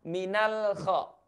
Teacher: Minal khaufi ini tidak boleh dibaca dengan suara memantul. Minal, saya sudah jelaskan tadi, pastikan lidah kita, ujung lidah kita persisnya, ketika bersentuhan dengan langit-langit, ini dia, minal, jangan buru-buru lidah kita ini dilepas dari langit-langit, ya.